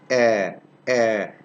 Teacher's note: It's a short vowel, which is produced in the front part of the vocal tract.